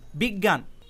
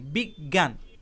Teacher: উচ্চারণের সময় গ দুইবার উচ্চারিত হয়েছে। অর্থাৎ এখানে বর্গীয় জ এই বর্ণটি উচ্চারিত হয়নি, ইয় এই বর্ণটি উচ্চারিত হয়নি।